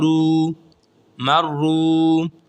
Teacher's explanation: میم زبر را، مر، را پیش واو رو، مرو۔ را کو موٹا کر کے پڑھیں گے اور ایک الف کے برابر کھینچیں گے کیونکہ واو مدہ ہے